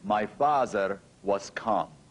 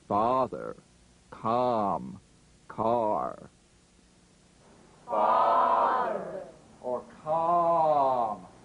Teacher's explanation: we need to pronounce our number five vowels with much larger openings for a big round ah sound